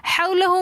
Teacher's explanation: حولہ میں واو واولین ہے، واولین کو ہم بغیر کھینچے پڑھتے ہیں. حولہ میں الٹا پیش آ رہا ہے تو اس لیے ہم ما حولہ، کیونکہ کھڑا زبر کھڑی زیر الٹا پیش کو ایک الف کی مقدار کھینچ کر پڑھتے ہیں تو ہم حولہ ہو کو تھوڑا سا کھینچ کر پڑھیں گے.